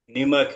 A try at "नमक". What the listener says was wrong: নিমক না, নামক। এটা জবর দেবে নামক। थोड़ा सा नमक है।